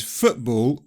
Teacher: nearly everybody says FOOTBALL with a glottal stop because it has another stop consonant after the t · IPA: [ʔ]